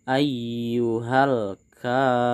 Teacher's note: Sekali lagi Pak tegaskan, huruf K panjang di sini disebut dengan mad tabi'i. Kita harus membacanya panjang 2 harokat.